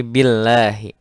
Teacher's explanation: Nah, lamul jalalah, ya, lam yang ada pada kalimat Allah ini atau kata Allah ini dibacanya tipis karena didahului oleh huruf yang berharokat kasroh